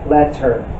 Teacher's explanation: We pronounce the T sound only once. However, when we break the word into syllables, the T sounds spans both letters.